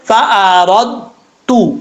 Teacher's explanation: پہلے ایسے لگے کہ دال کا مخرج ادا ہو رہا ہے، یعنی دال پڑھا جا رہا ہے، پھر تا پڑھا جا رہا ہے